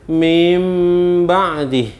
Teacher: bacaan nun mati dan tanwin berubah menjadi Meme ketika bertemu dengan satu huruf yaitu huruf ba' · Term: iqlab